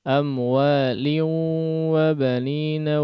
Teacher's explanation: Coba lihat bi amwalin wa digunnahkan, masukkan ke khayshum.